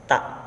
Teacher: Makhrajnya atau tempat keluarnya punggung ujung lidah dan pangkal dua gigi seri muka yang atas.